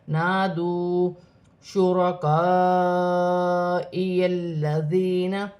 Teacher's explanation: بڑی مد بھی ہے، مد متصل، اسے 5 الف کی مقدار کھینچ کر پڑھا جائے گا۔ الف مدہ کو ملائیں گے تو 6 الف کی مقدار تک کھینچ کر پڑھا جائے گا۔